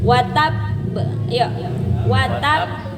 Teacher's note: ditahan sebentar baru dipantulkan karena ada tasdidnya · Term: qalqalah